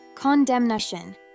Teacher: However, its noun form “condemnation” has 4 syllables, which is pronounced as “con-dem-na-tion,” and the “n” will need to be pronounced.